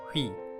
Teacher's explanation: It is when a composite vowel is on its action. The composite vowel consists of U and E in this case, so we have we for the vowel sound.